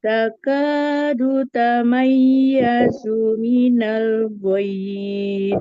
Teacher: Du-nya jangan sampai panjang dan ya-nya jangan sampai mendengung.